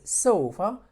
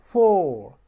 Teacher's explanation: So we have but 4 and O are different. This, when you say sofa, this is shorter O, and 4 is a longer O